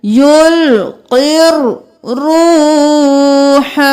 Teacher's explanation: यहाँ पर देख लीजिए युल कॉफ जेर रॉ खैर, यहाँ पर अलिफ और लाम को नहीं पढ़ेंगे, कॉफ को रॉ के साथ मिलाएंगे, ये या भी खाली है इसको भी नहीं पढ़ेंगे, युल्क़िर रूह।